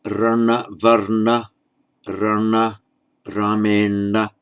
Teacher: N becomes retroflex after the R.